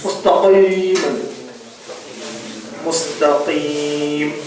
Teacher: நாவு சதை அன்னதுல படும். அதிகமா கலக்கம் கூடாது.